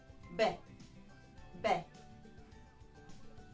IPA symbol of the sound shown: b